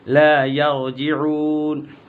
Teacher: را کو پر پڑھیں گے، را سے پہلے زبر ہے.